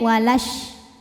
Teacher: tapi kalau wasol madnya gugur lamnya jadi pendek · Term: takhalus bil hadf